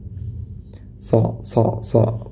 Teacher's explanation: Kemudian wa amilus solihati. Sod dia memiliki sifat isti'la dan itbaq. Jadi pangkal lidahnya ini sampai nempel pada langit-langit. So. Bukan berarti dimanyunkan kedua bibir kita.